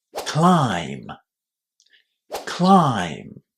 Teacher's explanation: Not only do you have to pronounce the letter I as well an I climb, but then you have to remember that the B at the end of this word is silent. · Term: silent B